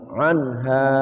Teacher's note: ain ya tengah kerongkongan